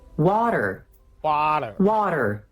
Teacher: Wa, open vowel, r, the flap T, and the dark R.